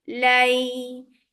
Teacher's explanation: You are giving nice time on fatha and then joining this fatha with ya very softly.